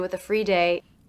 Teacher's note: also the article of course is a schwa now I pronounce the ending th unvoiced with the witha sometimes